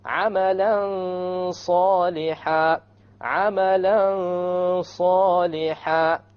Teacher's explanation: You hide the noon behind the sad and you have a ghunnah. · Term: ikhfa